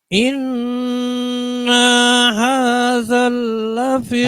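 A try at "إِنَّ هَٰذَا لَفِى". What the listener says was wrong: Hadza, bukan hadzal. Hadza.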